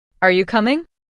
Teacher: Say this with a rising tone at the end.